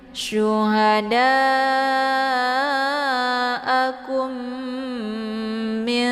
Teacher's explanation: cara bacanya didengungkan ya, ditekan ka-nya ya, kemudian ditahan suaranya 2 harakat sambil dileburkan suara ke dalam huruf mim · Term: idgham mimi